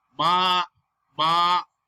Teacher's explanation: Okay, flat tone is called the first tone.